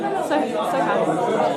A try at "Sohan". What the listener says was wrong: Yeah, don't say the H though.